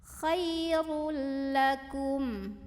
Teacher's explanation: Kemudian ada idgham bila gunnah karena ada tanwin dhammah yang ketemu sama huruf lam, maka cara membacanya tanwin dhammahnya dileburkan ke huruf lam. Jadi bacanya bukan khairun tapi khairul, langsung ke lam tanpa ditahan. Jadi ini masuk tanpa dengungan.